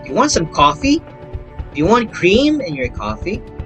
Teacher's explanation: a yes or no question has a long rising intonation pattern since it expects an answer